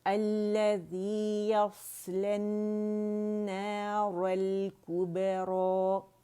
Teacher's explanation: الف جو مقصورہ ہے وہ را کی آواز کو 2 کاؤنٹ کھینچے گی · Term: الف مدہ